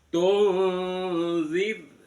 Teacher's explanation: Mimnya bertemu dengan lam itu izhar syafawi. Jelas di bibir. Mimnya dibaca jelas.